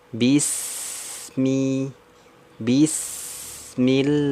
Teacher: huruf Sin itu kan rohwah berarti sempurna dari ujung ke ujung